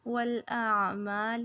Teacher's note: والاعمال یہاں پہ عین جو ہے وسط حلق سے نکالیں گے